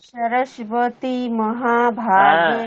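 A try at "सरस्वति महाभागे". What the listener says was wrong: আপনি সরস্বতী বলছেন, সরস্বতী দন্তেশ্ব, দন্তেশ্ব এখানে নেই তো।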